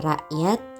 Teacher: Nah, tanda tanya ini digambarkan sebagai huruf K yang penyebutannya hamzah. Contohnya pada kata rakyat yang huruf K-nya itu tidak terlalu jelas.